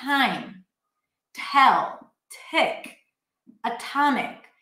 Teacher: the T at the beginning of word is aspirated.